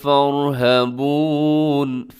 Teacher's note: اس میں را اپنے موٹا پڑھنا ہے، باقی سب کے سب باریک ہیں